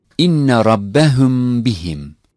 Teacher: The sound of Mimi Sakine is hidden in pronunciation. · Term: Ikfa, hiding